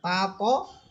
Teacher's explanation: তা এটার মাখরাজ হচ্ছে জিহ্বার আগা সামনের উপরে দুই দাঁতের আগার সাথে লাগবে।